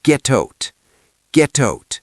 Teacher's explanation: In American English, that T in get changes because it's between vowels.